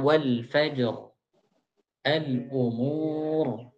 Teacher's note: itu tufakham waqfan, dibaca tebal ketika waqaf saja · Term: ditebalkan